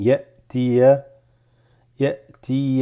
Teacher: This hamza with a sukun, there's just a slight pause without breathing.